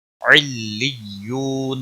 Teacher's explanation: یو واو مدہ ہے، 1 الف کے برابر کھینچ کر پڑھیں گے